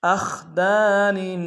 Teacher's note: حمزہ کو خا کے ساتھ ملانا ہے، خا کو موٹا ادا کریں گے، دال کے سالف مدہ ایک انداز میں کھینچیں گے، نون کے نیچے تنوین غنہ کریں گے۔